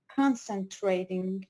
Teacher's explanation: They're stressing on the first syllable.